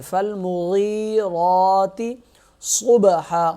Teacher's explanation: را ہرا کلر ہے، را بھی موٹا پڑھا جائے گا اور 1 الف کے برابر کھینچا جائے گا